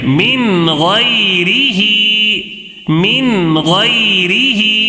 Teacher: یا ساکن سے پہلے زبر ہے تو یا لین ہے، یا لین کو کیسے پڑھیں گے؟ نرم آواز کے ساتھ جلدی پڑھیں گے